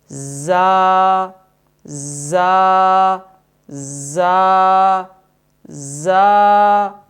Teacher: زا کا مخرج زبان کی نوک اور ثنایا علیہ اور سفلا کے اندرونی کنارے ہیں، یعنی جب حرف زا کو ادا کریں گے تو سامنے اوپر والے 2 دانت اور اس کے بالمقابل نیچے والے 2 دانتوں کے اندرونی کناروں کو آپس میں ملائیں گے اور اس کے بالمقابل زبان کی نوک کو لائیں گے اور اس حرف کو ادا کریں گے۔